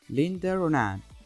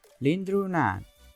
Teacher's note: Notice how we add r sound at the end of the word Linda, because it ends with a vowel and the other word which follows begins with a vowel. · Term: Intrusive r